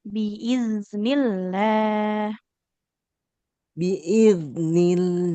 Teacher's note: huruf zal sukun harus lebih mengalir lagi suaranya